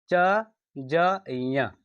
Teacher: हकार की ध्वनि नहीं निकलती है उसे हम अल्पप्राण कहते हैं